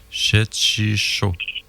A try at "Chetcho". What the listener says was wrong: Ouais. On prononce pas le I. Chetcho.